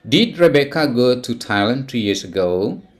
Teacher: It is rising intonation at the end of the sentence.